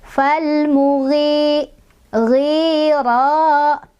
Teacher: mad tobi'i, karena ada kasrah di huruf ghin bertemu dengan ya sukun. Cara bacanya dipanjangkan 2 ketukan.